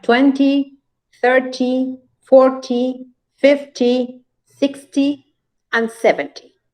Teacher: first syllable we have 20 30 40 50 60 and 70. numbers that are multiples of 10 and they are accented on the first syllable